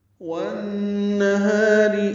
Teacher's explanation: واو کو نون سے ملانا ادغام شمسی ہے، الف لام نہیں پڑیں گے، نون مشدد اس میں غنہ ہوگا ، ہا الف مدہ ہے، دو حرکات لمبا ہے، را باریک